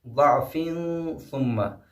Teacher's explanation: فا پہ جو ہے تنوین ہے اور فا کے فوراً بعد سا آیا ہے، اس لیے یہاں پہ بھی اخفاء ہوگا